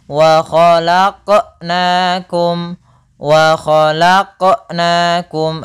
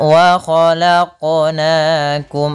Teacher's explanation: Kemudian pada lafal khalaqna, di sini ada bacaan qalqalah, yaitu huruf qafnya memantul. Kesalahan yang terjadi yang pertama tidak mantul, yang kedua adalah dia menambahkan hamzah.